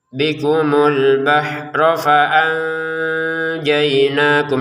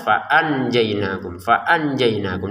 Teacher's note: nun sukun bertemu jim ini kita baca dengan samar faanjainakum nah seperti itu ya jadi dibaca dengan samar jangan dibaca dengan jelas.